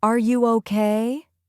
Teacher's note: your voice goes up at the end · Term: intonation